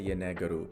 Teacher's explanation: When you make it into yenegeru, because this word ends with a vowel here, the I in between the G and the R is lost